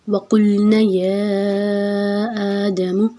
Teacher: قاف کو موٹا رکھنا ہے، نون کے اوپر زبر، آگے الف 2 حرکت لمبا رکھیں گے، یا کے اوپر مد ہے، آگے حمزہ کے اوپر کھڑی زبر ہے، 4 حرکت لمبا رکھیں گے۔